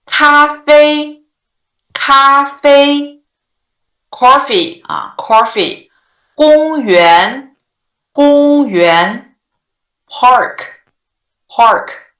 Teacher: five five right five five they all stay in the five level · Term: first tone